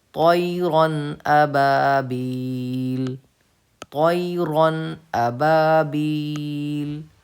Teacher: عَلَيْهِمْ طَيْرًا أَبَابِيل، طَيْرًا أَبَابِيل، رون پہ قاعدہ ہے تختی نمبر 9 اظہار کا، جس میں تنوین کے بعد حمزہ آ رہا ہے حروف حلقی میں سے، اسی لیے ہم کو یہاں پہ غنہ نہیں کرنا ہے